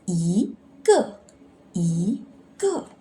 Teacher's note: Because before fourth tone, you need to read second tone.